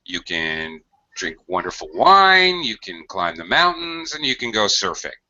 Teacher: listing intonation up up up down